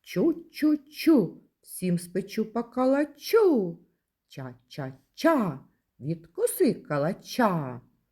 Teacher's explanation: звук ч приголосний і завжди твердий в українській мові тому в жодному разі не можна під час його вимовляння піднімати